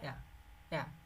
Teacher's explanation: এ। আবার ইর উল্টাটা এটা হচ্ছে এ, এটা হচ্ছে হালকা এ, একেবারে না এ না আ, না এ না আ, মাঝখানে যেরকম সাউন্ডটা হয় হালকা এ